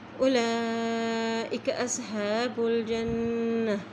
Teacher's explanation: جب بھی نون کے اوپر شد آتی ہے تو وہاں پر غنہ بھی کیا جاتا ہے